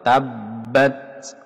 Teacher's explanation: ta ini hamas ada udara yang berdesis keluar. Tabbat, tapi jangan sampai masuk ke sin.